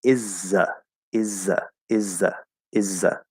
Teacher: And what we will commonly do is let the Z sort of take over that TH.